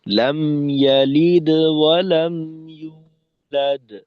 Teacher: প্রথম কলকলাটা একটু ছোট, আর শেষের কলকলাটা মধ্যম। তো সেক্ষেত্রে এই যে পার্থক্যটা, এটা কিন্তু স্পষ্ট থাকবে, এমন যেন না হয় যে দোনোটা একরকম হয়ে গেল, বেশি কম হবে আর কি।